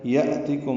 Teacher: یأتکم حمزہ ساکن جھٹکے سے ادا ہوگا